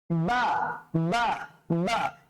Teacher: বাটা উচ্চারণ করার সময় আমরা কিভাবে করব? দুই ঠোঁটটা লেগে যাবে